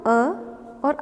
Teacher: जो श्वास नली में है कंठ, वहाँ से हम अ और आ का उच्चारण करते हैं, इसलिए ये कंठ्य स्वर कहलाते हैं।